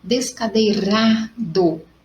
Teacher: eu posso falar que é a minha segunda sílaba mais forte, paroxítona